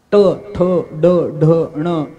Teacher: काही तालव्य आहेत, टाळूला बोलावं लागतं, टाळूला जीभ लावून उच्चारावं लागतात. ट, ठ, ड, ढ, ण हे तालव्य आहे, टाळूला जीभ लागते.